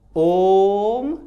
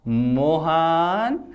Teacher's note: जब किसी व्यक्ति को दूर से पुकारते हैं तो संबोधन पद के अंतिम वर्ण को तीन मात्रा से अधिक समय लगकर बोलते हैं। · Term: प्लुत